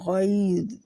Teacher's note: غا بھی موٹا ہے اور ذا بھی موٹا ہے، غیظ، اور غیظ نہیں کرنا، ذا کے مخرج میں رہنا ہے۔